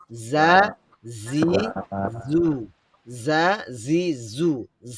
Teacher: জায়ের মাখরাজ হচ্ছে জিহ্বার আগা নিচের দাঁতের গোড়া এবং একটু শক্ত হবে। কারণ যেটাকে বলা হয় জাটা জিহ্বার আগা নিচের দাঁতের গোড়াতে স্পর্শ করবে।